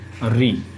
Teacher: मूर्धा से जो बोला जाता है वो है री।